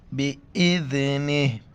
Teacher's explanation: وقف کی حالت میں صرف ہا کا ساؤنڈ آئے گا، زیر نہیں پڑیں گے